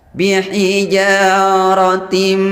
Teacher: Idgham itu masuk kemudian gunnah mendengung. Jadi bunyi taknya atau bunyi harakat taknya dimasukkan ke mim sambil mendengung serta dipanjangkan. Bihijaratim, dipanjangkan dan mendengung. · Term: idgham bi gunnah